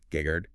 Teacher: It ends with an N. But if you listen to how the word is spoken today, Geghard, there is no N. You don't hear it at all. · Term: phonetic erosion